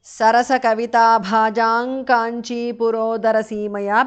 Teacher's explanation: Anuswara changes to ng there.